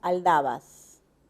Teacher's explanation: Aquí la única vocal que se repite es la A. Y es una vocal baja central.